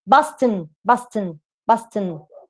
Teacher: you can take the schwa out and say london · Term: syllabic consonant